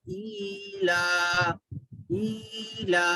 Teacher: ای کو بھی کھینچنا ہے لا کو بھی کھینچنا ہے کیونکہ کھڑی زیر ہے کھڑا زبر ہے۔